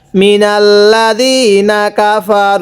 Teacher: এই র এর মধ্যে তিন আলিফ টান দিব